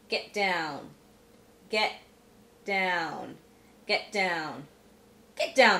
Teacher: if the first word ends in a t and the next word begins with a consonant sound then the t is pronounced as a glottal stop